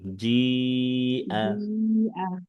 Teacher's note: চার আলিফ জিআ টেনে পড়তে হবে